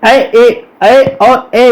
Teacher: इनका उच्चारण कंठ और तालु दोनों से मिलकर होता है। कंठ और तालु से जब दोनों से मिलकर इनका उच्चारण हो तो इन्हें कंठ तालव्य वर्ण कहेंगे।